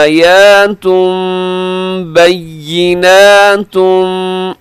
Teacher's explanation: آیاتم، یہاں اقلاب ہو رہا ہے، تنوین کے بعد با ہو تو تنوین کو میم سے بدل کے پڑھتے ہیں